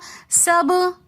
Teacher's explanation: سبع با حروف قلقلہ میں سے ساکن حالت میں آ رہا ہے تو اس لیے ہم سب با کی آواز کو پلٹا کر واپس لے کر آئیں گے